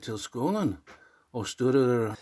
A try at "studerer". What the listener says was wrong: Yeah, you said studerer. It is studerer. So 2 things here, or maybe 3. The accent is on the 2nd syllable. It's like studerer. Then the U, of course. And also the E, okay, it's a long E. We don't have that sound in English either.